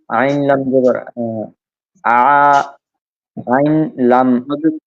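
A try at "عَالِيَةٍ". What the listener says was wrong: আইন লাম একসাথে না, আইন আলাদা। আইন আলিফ জবর আ, লাম জের লি, আলি, ইয়া জবর ইয়া, আলিয়া, তা দুই জের তিন, আলিয়া তিন। বানান করে পড়েন আপনি। মধ্যে তবাই বলেননি।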